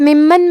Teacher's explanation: میم پہ تشدید ہے تو ہم 2 حرف کے برابر میم کو پڑھیں گے